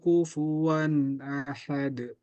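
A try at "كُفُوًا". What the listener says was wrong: kafnya jangan ditebalkan. Itu tebal. Ku. Ada udara.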